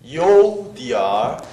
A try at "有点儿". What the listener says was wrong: 예이성이잘안올라가죠 有해보세요 그렇게해야됩니다디알할때도공기를내뿜어야돼요有点儿